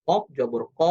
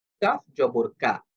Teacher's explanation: ২ টাই যেমন অ সাউন্ডে হবে না, ঠিক তেমনি ভাবে ২ টাই আ সাউন্ডে বলা যাবে না। একটা অ সাউন্ডে একটা মোটা হরফ, একটা আ সাউন্ডে এটা পাতলা হরফ।